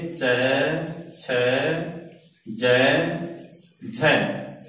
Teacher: ध्वनि पहले चिपकती और फिर धक्के से छूटती है और फिर बाहर निकलती है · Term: स्पर्श सघर्ष